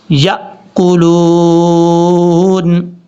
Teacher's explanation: یا کے بعد جو الف کی شکل میں آپ کو نظر آ رہا ہے یہ حمزہ ہے، جھٹکے کے ساتھ پڑھا جائے گا